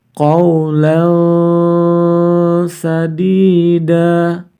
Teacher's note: Fathur Thailand Kemudian bertemu dengan salah satu huruf ikhfa Sin maka tanwin fathatain harus dibaca samar-samar kemudian baru kita baca huruf sim-nya